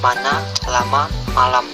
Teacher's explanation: kriteria bunyi bilabial hambat tak bersuara contoh kata pita apa tetap konsonan m kriteria bunyi bilabial nasal bersuara